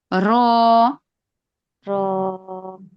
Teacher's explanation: জিহ্বার আগার পিঠ, মানে জিহ্বার আগাটা একটু উল্টিয়ে, মানে উল্টাইলে দেখবেন আসবে জিহ্বার আগার পিঠ, উপরে তালুর র।